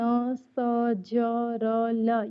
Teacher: ऐसा व्यंजन जिसको उच्चारण करने में जीभ जो है ऊपर के वत्स कटक को छूता है या उसके पास जाता है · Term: वत्स व्यंजन